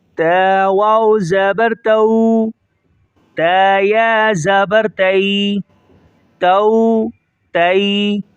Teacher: تو یہ واو یا لین کہلاتے ہیں اور نرمی کے ساتھ پڑھے جائیں گے۔